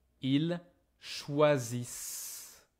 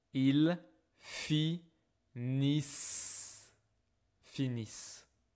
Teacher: the ENT in conjugation, I don't hear it.